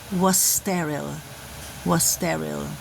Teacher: Blend the two S's and produce only one S sound.